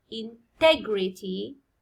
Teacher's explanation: هنا stress يجي على تي